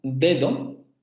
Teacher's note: Cuando nosotros pronunciamos dedo, siempre pronunciamos, bueno, dependiendo de lo que aparezca antes de dedo, pero de manera general siempre pronunciamos la primera D como una sonora oclusiva dental y la segunda como una sonora fricativa dental